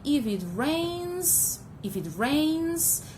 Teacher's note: I'm using the rising tone because I need more information. There's something that is incomplete.